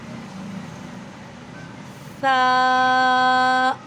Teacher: سا کو نرمی کے ساتھ پڑھتے ہیں اور اپنی زبان اوپر اور نیچے والے دانتوں کے درمیان میں رکھ کر سا کی ادائیگی کو بہتر طریقے سے کیا جا سکتا ہے